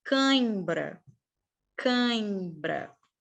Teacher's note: no ditongo nasal o ar ele vem pelo menos sistema respiratório parte dele passa pela boca parte passa pelo nariz